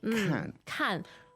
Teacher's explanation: notice the falling tone there the fourth tone